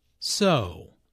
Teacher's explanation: Notice how the O sound is drawn out here, combined with the intonation which shows boredom.